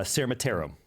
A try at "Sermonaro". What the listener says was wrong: No. There's no T in there. It's got to be Sermonaro.